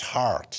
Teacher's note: the r is pronounced after a vowel